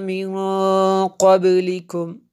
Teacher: نون ساکن کے بعد قاف حروف اخفا میں سے ہے یہاں پہ، اس لیے یہ غنہ کیا ہم نے، اخفا کیا